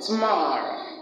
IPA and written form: tə'mɒr.əʊ (Tomorrow)